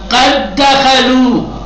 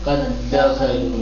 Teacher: دو دال آیا اکٹھا، پہلا ساکن تھا، پہلے والے کو حذف کر دیا، دوسرے والے پہ تشدید دے دیا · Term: ادغام